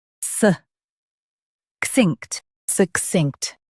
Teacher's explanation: suh k-sinkt, succinct Stress k-s-i and keep -inkt quick.